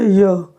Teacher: लेकिन य र ल व आप कहेंगे य, जिह्वा जा रही है ताल के पास, वायु को जाने का रास्ता दे रही है, पूरी तरह से अवरुद्ध नहीं कर रही है, न पूरी तरह से मुक्त कर रही है।